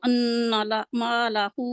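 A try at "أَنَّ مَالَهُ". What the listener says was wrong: अन्ना को मोटा नहीं करना, अन्ना को प्लीज ब्रीक करें।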